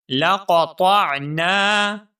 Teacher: قاف اور طا دونوں الفاظ کو ہم موٹا کر کے پڑھیں گے